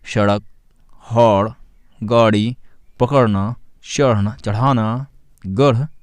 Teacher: इनका उच्चारण करते समय जीभ झटके से ऊपर जाती है। इन्हें उपश्रिप्य यानी ऊपर फेंका हुआ व्यंजन भी कहते हैं, जैसे सड़क, हौड़, गाड़ी, पकड़ना, चढ़ना, चढ़ाना, गढ़ इत्यादि।